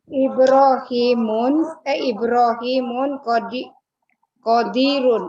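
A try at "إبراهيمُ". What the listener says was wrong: Ibrahimu, benar Ibrahimu Ibu, tidak bertanwin ya.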